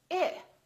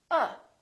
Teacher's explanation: it's tense when I say it or when I say uh there's not much happening in my mouth Oh my lips are relaxed and my tongue is relaxed in the back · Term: neutral